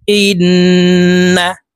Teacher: তিন সেকেন্ড পরিমাণ গুন্নাহ করে ধরে রাখবো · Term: ওয়াজিব গুন্না